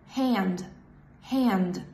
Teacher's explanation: Sound a in hand is actually much more open. And also I was supposed to use the back of my tongue because of the N that follows.